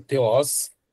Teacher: O TH, então, ele não é um equivalente ao T da nossa língua. Então ele é mais puxado, mais sibilante, mais puxado para um som, tá?